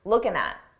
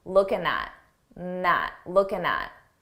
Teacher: it's very common to take a word that ends in ing and drop the G sound, that g sound, and just end it on looking at.